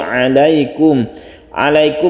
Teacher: ini tidak panjang tidak berdengung karena izhar izhar itu Yes dan terang jelas Suara minimnya jelas alaykum wa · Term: izhar syafawi